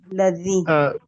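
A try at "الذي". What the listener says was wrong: تبارک الذی، زال کا جو مخرج ہے اس کی درستگی کی حاجت ہے کہ جہاں سے ادا ہونا تھا وہاں سے نہیں ہو رہا، سختی پائی جا رہی ہے.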